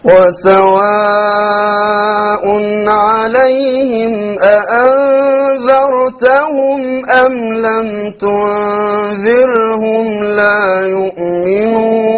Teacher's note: notice how he said the أأنذرت, the very crisp 2 hamzas